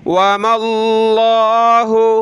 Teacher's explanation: لفظ اللہ سے پہلے زبر ہے میم پر تو موٹا کریں گے